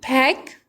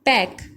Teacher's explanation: One aspirated allophone और दूसरा जो है वो नॉन एस्पिरेटेड है, यानी एक में पी और एच यानी पैक और एक में पैक।